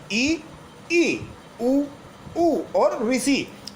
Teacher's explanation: समृत स्वर वो स्वर होते हैं जिनका उच्चारण करते समय मुख द्वार सकरा हो जाता है, यानी हम बोलते हैं तो बिल्कुल ऐसा लगता है मुंह लगभग बंद हो गया हो।